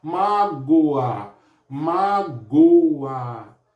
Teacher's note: O O fica fraco, o A sobe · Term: ditongo crescente